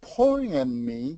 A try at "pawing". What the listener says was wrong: It's actually, don't worry about the W.